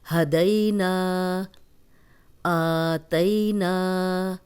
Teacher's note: دئی جو ہے یہ یا لین ہے، جزم والی یا پیچھے دال پہ زبر، دئی۔ نا، الف مدہ ہے، خالی الف، پیچھے نون پہ زبر ہے، اس کو 2 حرکات لمبا کریں گے